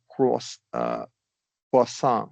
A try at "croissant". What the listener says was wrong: You emphasized the first syllable and we want to stress the second